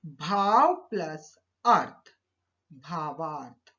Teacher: भाव पहला शब्द, इसका अंतिम वर्ण है अ, और अर्थ, अर्थ का प्रथम वर्ण है अ। तो अ और अ मिलकर दीर्घ आ बन गया। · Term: दीर्घ संधि